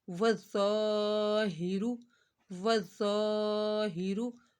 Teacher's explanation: ذا حروف مستعلیہ ہے الف مدہ ہو رہا ہے اس وجہ سے یہاں پر ذا کو ایک الف کے برابر کھینچا